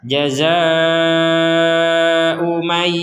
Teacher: Di sini ada harokat bendera, kita baca 4 sampai 5 harokat.